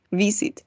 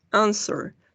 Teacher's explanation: Ahí tenemos el golpe de voz en la primera sílaba.